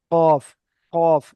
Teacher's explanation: জিহব্বার গোড়া ওই সোজা উপরের তালুর সঙ্গে লাগিয়ে কফ উচ্চারণ হয়